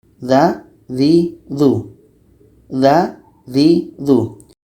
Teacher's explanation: dza juga sama-sama letaknya pada ujung lidah menempel dengan ujung gigi seri atas